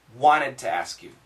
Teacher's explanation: here the N kills the T so the S and the N are both killing the T